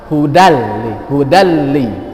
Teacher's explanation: Apa arti idgham bila gunnah? Suara nun tidak terdengar.